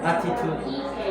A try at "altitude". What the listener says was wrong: altitude. There's L here. Maybe you're confused with the attitude and altitude, right? But it's altitude.